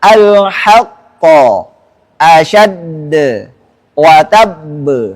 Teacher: nggak boleh ada suara hamzah sukun. Dan juga nggak boleh ada suara ha. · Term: Qalqalah akbar